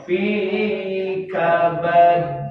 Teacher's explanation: kabad ditahan dulu baru mantul dilepas. Ini qalqalah kubra fi kabad.